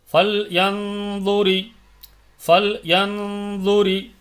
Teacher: ஃபல்ரின் அந்த கனமா கொடுக்கணும் என்ரி அப்படி படிக்கக்கூடாது அப்படி படிக்கக்கூடாது ஃபல்ரி ஃபல்ரி கொஞ்சம் குன்னா கொடுக்கணும் இது இக்பா உடைய சட்டம்